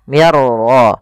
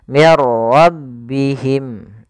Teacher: masukkan nunnya kepada huruf ra sehingga suara nunnya hilang, langsung terbaca dengan jelas suara ra-nya. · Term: idgham bila gunnah